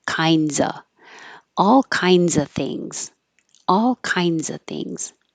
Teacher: a consonant you don't have to say the V you can just drop it and say uh